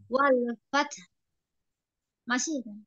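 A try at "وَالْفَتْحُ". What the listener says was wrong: H, H sukunnya belum ngalir Walfat gitu. Walfat. fats fats. Nah, ini suaranya yang ngalir ya. Fat fat fat gitu ya. Fat fat fat gitu. H, H sukunya mana? Dialirkan. Walfat gitu. Walfat.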